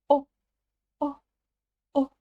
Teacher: сначала произносим букву о о обыкновенную а затем её краткую краткую версию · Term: у с чёрточкой